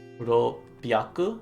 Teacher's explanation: So that little tsu there, that little symbol there means that we double up on that consonant sound of this p, of this pya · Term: doubled consonant